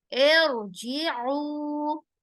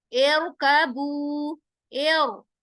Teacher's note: रा को हम कैसे करेंगे, तफकीम करके पढ़ेंगे, तरकीक नहीं। हालांकि है तो कसरा ही, लेकिन हम यहाँ तफकीम करेंगे, तरकीक नहीं।